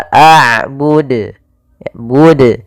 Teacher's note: Ma'abud ini nambahkan hamzah. Harusnya tidak boleh ditambahkan hamzah, tetap dijelaskan qalqalahnya.